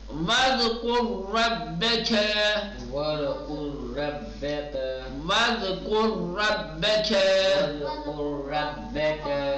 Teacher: دیکھیں دو را آیا ہے، ایک وَاذْكُرْ را ساکن اور اس کے بعد رَبَّكَ، دونوں کو تفخیم کے ساتھ پڑھیں گے۔ پہلے والے را کو تفخیم کے ساتھ اس لیے پڑھیں گے کہ را ساکن ما قبل پیش ہے نا، جی دوسرا والا قاعدہ، اور دوسرے والے را کو پہلے قاعدے کے تحت کہ را پر زبر ہے، ٹھیک۔